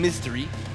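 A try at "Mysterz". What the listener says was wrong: Mystery? There's no S. It is actually a Z.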